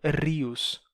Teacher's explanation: Rivus e depois terminaria perdendo esse v na fala popular dando rios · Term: perda do v intervocálico